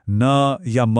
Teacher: हवा मुंह से नहीं बल्कि नाक से निकलती है। इसलिए यह नासिक के हैं। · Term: नासिक्य